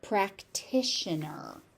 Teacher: that T is heavily pronounced and aspirated. The next T turns into a sh sound because it's in an ION.